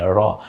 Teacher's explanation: জিহ্বার আগার পিঠ তার বরাবর উপরের তালুর সঙ্গে লাগে